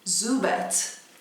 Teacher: a ênfase está no começo e é um U longo, Zubat. Vamos chegar no Vulpix?